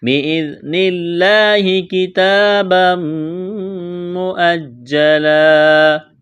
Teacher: بِإِذْنِ اللَّهِ كِتَابًا مُؤَجَّلًا کڑا زبر ہے، ایک الف کے برابر کھینچنا ہے. تنوین کے بعد میم مشدد ہے تو ادغام کریں گے، یہاں پر غنہ کریں گے، آواز ناک میں چھپائیں گے. کتابا مؤجلا وقف میں دو زبر کی تنوین کو الف سے تبدیل کرنا ہے.